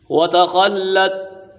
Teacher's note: خا حرف مستعلے میں سے یہ پر پڑا جائے گا۔